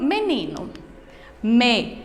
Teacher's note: Menino. A sílaba mais forte foi o nin. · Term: sílaba tônica